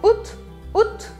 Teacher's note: Tem que esquecer que tem esse A e aí você vai falar só août, août